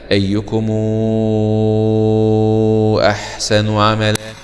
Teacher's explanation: ضمت ومدت طولا، أي أن توصل بواو لفظا مع المد 6 حركات، يعني الإشباع 6 حركات.